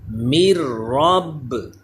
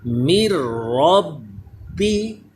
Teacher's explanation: رواں پڑھتے ہوئے نون کی آواز نہیں آئے گی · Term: ادغام بغیر غنے